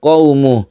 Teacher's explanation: Akan tetapi mad silah qasirah ini apabila dia diwaqafkan maka tidak panjang seperti qaumuh. Qaumuh ini aslinya mad silah qasirah.